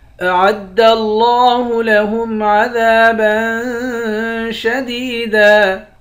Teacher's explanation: لفظ اللہ کے لام کو موٹا بھی پڑھیں گے. لفظ اللہ کے لام کے اوپر کھڑا زبر ہے، اس کو ایک الف کے برابر کھینچیں گے